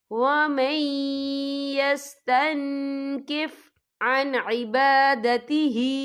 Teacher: اور آگے دیکھیں یستنکف، تن، یہاں نون ساکن ہے، نون ساکن کے بعد جو ہے کاف آ رہا ہے، اور کاف جو ہے اقفا کا ورڈ ہے تو ہم یہاں اقفا کریں گے، نون ساکن کی آواز کو ناک میں چھپائیں گے